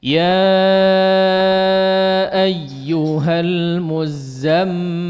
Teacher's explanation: Lihat di terakhir ada huruf mim ya, di akhir-akhir ada huruf mim bertasydid. Silahkan digunnahkan sesuai dengan kadarnya, dipanjangkan. Ya, jangan terlalu singkat.